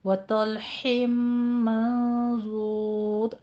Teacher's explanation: آپ نے ضاد کو پر پڑھنا ہے، طا کو بھی پر پڑھنا ہے، طا کے بعد جو لام ساکن ہے اس کو باریک ہی رہنے دینا ہے